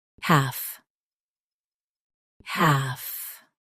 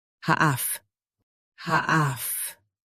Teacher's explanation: US half is shorter. UK half holds the a longer.